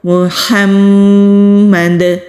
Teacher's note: دال کو ساکن کرتے ہوئے کلکلا کریں گے۔ کلکلا کہتے ہیں آواز کے پلٹ کر آنے کو۔